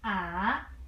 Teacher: For the third tone, you should start from low position.